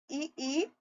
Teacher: तालू से इ ई और च वर्ग के व्यंजनों की आवाज निकलती है